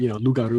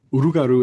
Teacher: a confusion of liquid consonants, the L and the R. That's pretty common in Louisiana French.